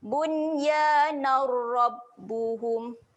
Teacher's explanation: Bacaan yang memasukkan terus. Bunyi huruf ra ni masuk terus pada bunyi huruf nun ni. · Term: bacaan asimilasi